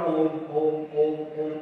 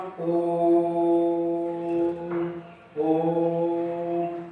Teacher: ये वे स्वर होते हैं जिनके उच्चारण में ह्रस्व स्वरों से तीन गुना समय लगता है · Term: पलुत